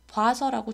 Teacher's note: 마찬가지로 봐라는 이중모음은 반모음 오우에 아를 결합시킨 거니까 변동 전과 아는 똑같이 그대로 있고 단모음이었던 오만 반모음인 오우로 변동된 현상이라고 말할 수 있겠죠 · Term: 반모음화